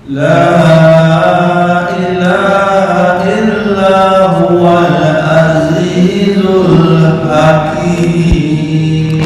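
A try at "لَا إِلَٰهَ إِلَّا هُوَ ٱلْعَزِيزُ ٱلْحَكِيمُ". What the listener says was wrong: Oke, za-nya lumayan bagus, nanti bisa berguru.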